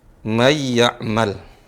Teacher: cara bacanya sekarang bukan man. Nun mati, suara mannya hilang. Tidak terdengar.